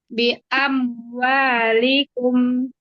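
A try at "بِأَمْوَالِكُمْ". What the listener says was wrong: Jangan jangan diputus karena kata bi amwalikum dia satu kata. Jadi nggak boleh bi amwalikum, itu tidak boleh. Tapi bi amwalikum, bi amwalikum.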